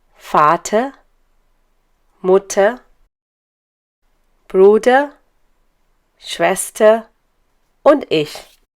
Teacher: Many words end in er, but one speaks a sound between a and e. In any case, you don't hear an r.